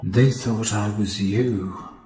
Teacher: we get some nice clear T sounds as well, though note the lack of glottal stop.